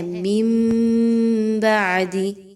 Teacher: یہاں پہ نون کی آواز کو میم کی آواز میں بدل دینا ہے